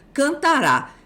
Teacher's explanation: na forma arrisotônica, a sílaba tônica cai fora do radical do verbo